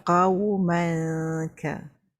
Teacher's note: ikhfa hakiki jumpa huruf kaf, kena senyum lah sebab huruf kaf kita sebut dia ka